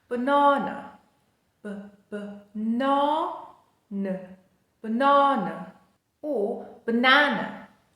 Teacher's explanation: It has three a's in the spelling, but two of them are schwas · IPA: /ə/